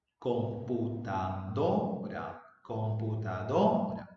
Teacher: El acento está en la sílaba do, es la que suena más. Entonces, si el acento está en la sílaba do, se dice que la sílaba do es la sílaba tónica. · Porque se pronuncia con mayor fuerza de voz, porque tiene el acento. La sílaba do es la sílaba tónica dentro de la palabra computadora.